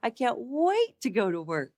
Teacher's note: So the attack there is, I can't wait. Hear the inflection and the pitch goes up.